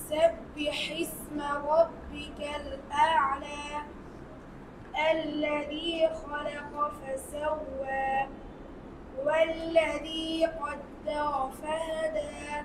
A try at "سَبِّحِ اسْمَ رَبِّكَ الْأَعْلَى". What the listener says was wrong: র হয় নাই আবার